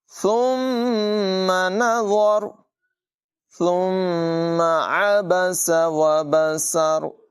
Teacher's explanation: ثم نظر ثم عبس وبسر، عین کی آواز نمایاں ہوگی، سین میں دونوں جگہوں میں سیٹی نکالیں گے، ثا کو بغیر سیٹی کے پڑھیں گے۔